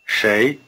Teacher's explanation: 谁 You may be hearing shay as beginning with an English sh sound, but there is a slight difference. The tongue is curled back in the retroflex position for the consonant of shay. It's the same sound you had in shi. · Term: R-flavored sh